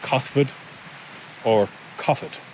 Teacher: that TH sound can be silent and just pronounced like a H